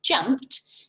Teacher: This ed at the end is tricking us here, isn't it? So it's actually making the t sound.